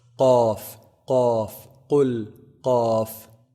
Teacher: Qaf is pronounced from the deepest part of the tongue. So the closest to the throat, the farthest from the mouth.